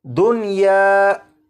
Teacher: इस लफ्ज़ में नून साकिन को या में इदगाम नहीं करेंगे बल्कि यहाँ पर नून साकिन को ज़ाहिर करके पढ़ेंगे